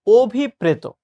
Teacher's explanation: তো অভিপ্রেত শব্দটা আমরা যখন লিখব তখন আমরা মনে রাখবো যে আমাকে অ লিখতে হবে। কিন্তু যখন ভাই আমি উচ্চারণ করব তখন এই অ হয়ে যাবে ও।